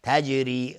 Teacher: تجری را ترقیق است چون کسره داره